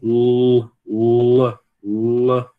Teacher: o L escuro, ele tem um sonzinho de U também